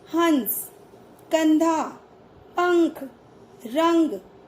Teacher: अनुस्वार, इनका चिन्ह शिरोरेखा के ऊपर बिंदु के रूप में लगाया जाता है। इनका उच्चारण करते समय हवा नाक से बाहर निकलती है